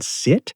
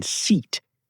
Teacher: the difference between the short I in sit and the long E in seat